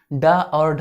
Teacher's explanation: डा और ढा इसे हम उत्क्षिप्त व्यंजन बोलते हैं और इसका उच्चारण स्थल क्या है आपका, मूर्धा है या मूर्धन्य है।